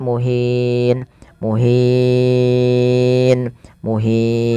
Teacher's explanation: bertemu dengan huruf sukun Arid maka dinamakan dengan mad Arat sukun boleh memanjangkan dua harakat boleh empat dan boleh pula enam harakat